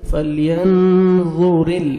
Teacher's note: را کو باریک پڑھنا ہے، لام کے ساتھ ملائیں گے